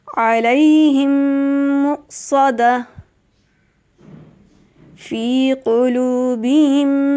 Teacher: دونوں میم ایک ساتھ ہو جائیں گے، یعنی میم ایک ساکن ہے اور دوسرا میم متحرک یعنی اس پہ زبر ہے، زیر ہے یا پیش، تو دونوں میم ایک ساتھ ہو جائیں گے اور میم مشدد کی طرح وہاں غنہ ہوگا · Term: ادغام